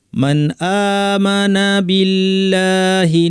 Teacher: মান আমানা স্পষ্ট করে পড়তে হবে, এখানে হামজার উপর ছোট আলিফ টানতে হবে। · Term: ইজহার